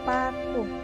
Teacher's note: Ciri-cirinya mati, oral, bilabial, plosif